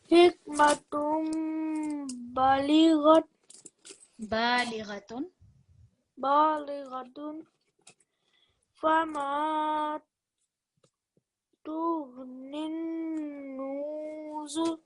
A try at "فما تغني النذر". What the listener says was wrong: Make the noon shorter, but put the stress on there. So tughnin nuzur.